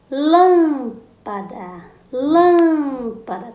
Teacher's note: chamamos nos classificamos essa palavra proparoxítona Vamos aos exemplos lâmpada lâmpada quando você chama palavrinha lâmpada a sílaba mais forte é Lan · Quando você chama a palavrinha lâmpada, a sílaba mais forte é lã.